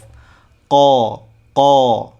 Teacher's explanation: huruf qof. itu memiliki sifat jahr. Jadi tidak ada udara atau desis yang keluar pada saat kita menyebutkan huruf qof. Qo qo ya.